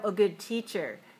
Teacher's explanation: so good teacher usually the stress is on the noun the second word because it's adjective plus noun